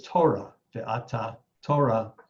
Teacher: in Aramaic by contrast th merged with the consonant T which is why in the word for sure is Torah Torah